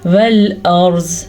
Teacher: را کو بھی پر پڑھنا ہے اور زواد کو بھی پر پڑھنا ہے، یہ دونوں پر پڑھے جائیں گے. را اس لیے پر پڑھا جائے گا کیونکہ را ساکن سے پہلے زبر ہے، زواد اس لیے پر پڑھا جائے گا کیونکہ زواد حروف مستعلیہ میں سے ہے.